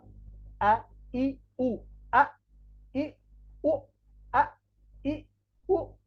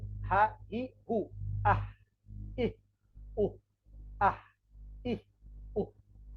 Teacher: হলক মানে গলা, গলার এই শুরু জায়গা থেকে উচ্চারিত হবে 2টা হরফ হামজা হা